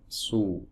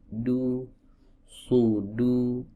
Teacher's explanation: huruf shad itu saat di dhammah itu kan tebal, maka dhammahnya agak membulat, su. Adapun dhammah yang ada pada huruf dal ini agak memipih, du, sudu.